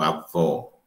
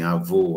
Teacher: O O aberto, o O fechado, faz com que haja uma distinção nas palavras.